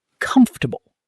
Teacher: Comf is loud and long. Everything after is quiet and quick. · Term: stress